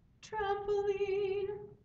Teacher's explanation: when it follows a TR or D we use the retroflex r to avoid what brother Kempton calls the Dracula effect